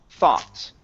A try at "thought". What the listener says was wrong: Oh, okay, almost. Give me a T at the end.